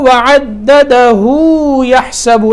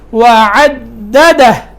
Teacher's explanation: یہ جب اس کو ملا کر پڑھیں گے تو وعددہ یحسب ایسے پڑھیں گے، لیکن یہاں وقف کیا ہے تو وقف کی صورت میں وعددہ، یہاں ہا ساکن ہو جائے گی اور وقف ہا کے اوپر ہوگا.